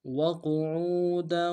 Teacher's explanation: موٹا ادا کریں گے، عین کو واو کے سامنے لانا ہے، عین کو گہرائی سے ادا کریں گے، واو مدہ ایک مقدار میں کھینچیں گے، دال کی تنوین کو غنہ کرتے ہوئے واو کے سامنے لانا ہے